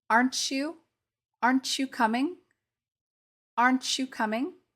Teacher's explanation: we aren't saying the T sound it's transformed into a CH sound